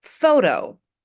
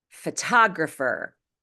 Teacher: photo follows the T between vowels rule. The T is pronounced as a light D. Photographer follows the exception rule. When T is at the beginning of the strongest syllable, it's pronounced as a true T, regardless of whether or not it's between vowels.